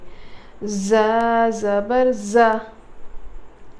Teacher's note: इसको एकदम स्ट्रॉन्ग पढ़ेंगे सख्ती से, और इसमें विज़लिंग साउंड, सीटी जैसी आवाज़ आती